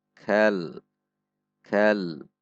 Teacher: Huruf kaf, perhatikan ada sedikit dorongan udara saat mengucapkannya.